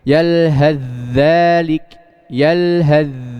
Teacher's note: Huruf sa-nya hilang. Langsung masuk ke huruf dzal.